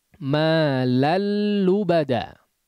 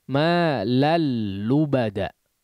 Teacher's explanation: langsung masuk kepada huruf lam Jangan dihunahkan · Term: idgham